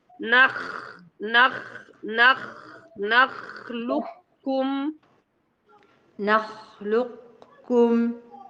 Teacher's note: لابد ان ضبط الفتحه مخرج الفتحه نعم لكي نضبط الخاء هنا الخا في نخلقكم الخا ساكنه والنون مفتوحه يبقى هتكون في درجه الثانيه للتفخيم